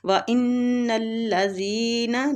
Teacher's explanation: وَإِنَّ الَّذِينَ نون مشدد غنہ کریں گے